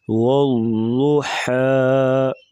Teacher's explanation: حا کی باریک آواز ہے اور ضاد کو پور پڑھیں گے۔